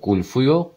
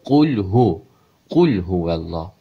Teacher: H hərfi boğaz ortası deyil, sadə H-dır. Hu deyil, həm də fu deyil.